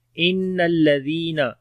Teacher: نون کے اوپر شد ہے، غنہ کریں گے، لام کو باریک پڑھیں گے، زال کو نرم پڑھیں گے اور لمبا بی کریں گے، یا مدہ ہے۔